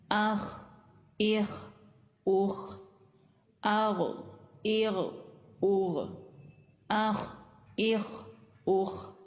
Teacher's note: गले के बिल्कुल ऊपर से आवाज आ रही है।